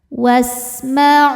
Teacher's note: sinnya desis kayak suara ular karena punya sifat namanya shofir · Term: sofir